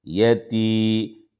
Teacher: یا ساکن سے پہلے زیر، دو حرکت کے برابر کھینچا جائے گا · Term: یا مدہ